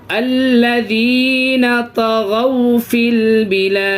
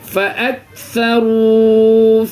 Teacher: واولین کو جلدی پڑھنا ہے، واو مدہ کو کھینچ کے پڑھنا ہے. فرق دونوں کا یہی ہے کہ واو پر سکون اس سے پہلے زبر واولین، اور واو پر سکون اس سے پہلے پیش یہ واو مدہ.